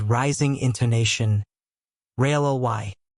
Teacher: If you say it with rising intonation, really, it means surprise, like, are you serious?